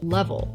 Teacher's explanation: You can probably feel your tongue touching the top of your mouth right behind your teeth as in lead. But the L at the end of the word is a dark L where the tip of the tongue might not even touch the top of your mouth at all. A dark hill is where the back of the tongue is moving up towards the soft pallet and it gives it a a sort of oish sound. · That first L is a clear L. You can probably feel your tongue touching the top of your mouth right behind your teeth